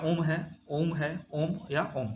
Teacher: प्लुत स्वर जिसको बोलने में बहुत ज्यादा समय लगता है